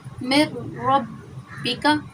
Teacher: نون ساکن کے بعد را مشدد آ گیا تو یہاں پہ غنہ نہیں ہوگا۔ میں ربک، نون ساکن کا سمجھا دیا۔ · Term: ادغام بلا غنہ